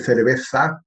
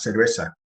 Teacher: con mucha Z y mucha lengua fuera, como en España